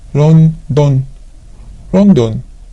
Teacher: there is no L sound in Japanese. So all the L sounds becomes R sounds.